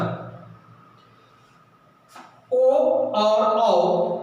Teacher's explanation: ठीक, इसी तरह नीचे का सूत्र है ओ दौतो कंठोष्ठ। ओ और औ यह दोनों कंठ और ओष्ठ से निकलते हैं